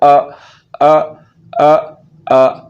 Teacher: حمزہ کا مخرج حلق کے نیچے والا حصہ ہے